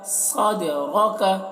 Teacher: دال حروف قلقلہ میں سے ہے تو دال میں قلقلہ بھی کریں گے ، اور را کو موٹا کر کے پڑھیں گے، را کے